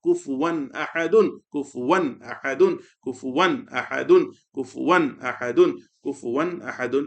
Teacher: For the last example of the page, كاف ضمه كو فا ضمه فو واو فتحتين ون كفوا. After tanween, idhar letter hamza appeared, so the tanween will be recited clearly. كفوا همزة فتحة أ كفوا أ ح فتحة ح كفوا أح دال ضمتين دن كفوا أحد كفوا أحد كفوا أحد كفوا أحد كفوا أحد.